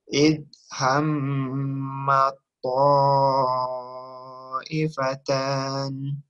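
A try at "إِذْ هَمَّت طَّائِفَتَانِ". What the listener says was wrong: Nah, makhrajnya ini langsung ke huruf to. Jadi sifat to ini nggak ketemu tuh. Kurang maksud saya. Ya, jadi kurang tebal. Dia kan takhim. Ya, kalau ta itu dia tarkik hamas gitu, punya hamas. Jadi jangan baca idhammat ta'ifatan, tapi langsung ke huruf to-nya. Idhammat ta'ifatan.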